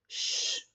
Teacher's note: el fricativo posalveolar sordo suena así